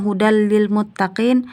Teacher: hukumnya idgham bila guna karena tanwin bertemu dengan la maka dibaca ditasjidkan